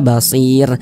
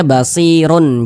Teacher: huruf r-nya ini kita sukunkan atau kita matikan